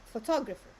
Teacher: So the stress here is in the second syllable.